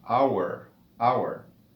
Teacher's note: si escucha la pronunciación de la palabra en inglés, inicia con el sonido de la vocal O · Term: H muda